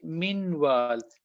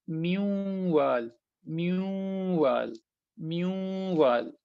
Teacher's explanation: So noon is gone, only the nasalization left.